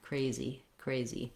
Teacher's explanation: the letter Y says the E, tense E sound in this word, crazy, crazy.